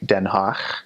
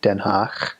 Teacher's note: Dutch does have a guttural in it. It has a guttural G. So instead of G, it makes a ch sound.